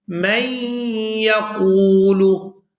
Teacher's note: یہاں میم کو یا مشدد کے ساتھ ملائیں گے اور غنہ کریں گے